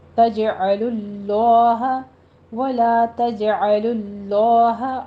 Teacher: आगे लफ्ज़ जलाला आ रहा है, इसको पुर पढ़ना है